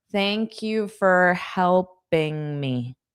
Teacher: this for can be more of an unstressed fur.